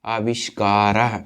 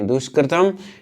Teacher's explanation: उन दोनों के बीच में जो विसर्ग है विसर्ग का श हो जाता है, यानी मूर्धन्य शकार हो जाता है